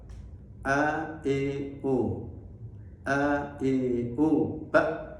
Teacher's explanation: Yang sebenarnya hamzah itu di tenggorokan paling bawah